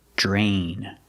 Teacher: Pronunciation, we see DR together, it makes the j sound, like jump and juice. J. Plus the R, drain.